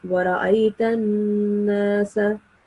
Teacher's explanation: But as I said before, that the noon mushaddad is supposed to be the sound of the noon mushaddad is supposed to be prolonged just a little bit, and it makes a nasal sound